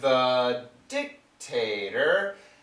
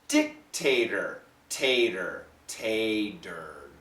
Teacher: this is what we call a flat T which is more like a d